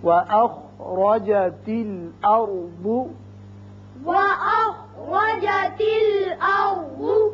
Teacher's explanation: را یہ ساکن جو ہے یہ بھی پر ہوگا اس لیے کہ پہلے زبر ہے اور بعد بھی پر پڑتے ہیں.